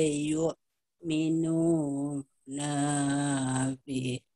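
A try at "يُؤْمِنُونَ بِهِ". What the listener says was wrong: Nah, nanya pendek. Yu'minuna bih. Nanya pendek. Yu'minuna bih.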